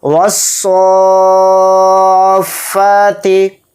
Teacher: تو حروف مدہ کے بعد فوراً تشدید آ رہی ہے فا کے اوپر, تو یہ بھی مد لازم ہے. اس میں مد لازم کا قاعدہ ہوگا اور اس کو 5 الف کی مقدار ہم کھینچ کر پڑھیں گے